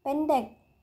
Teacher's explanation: vokal e seperti huruf tiga terbalik Tengah bawah depan tak bundar